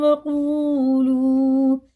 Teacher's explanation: دیکھیں یہ حرف مدہ ہیں، دونوں واو ساکن سے پہلے پیش، واو ساکن سے پہلے پیش، ان کو الٹا پیش کی طرح کھینچ کے پڑھنا